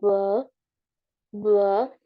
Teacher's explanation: Porque cuando lo pronunciamos, B, B, vamos a sentir esa vibración, ¿no? Y la B es un sonido bilabial porque usamos los dos labios para producir. So, el modo de articulación sería bilabial.